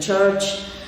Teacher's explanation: English has two affricates, as I said, voiceless ch as in church